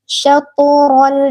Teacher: Dipantulkan karena dia huruf qalqalah.